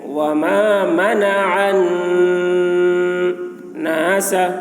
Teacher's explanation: نون مشدد ہے، نون میں غنہ ہوگا، یعنی نون کی آواز کو ناک میں لے جا کر گنگنائیں گے